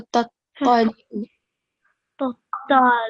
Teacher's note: it's mushaddad. So you have to clearly pronounce the double sound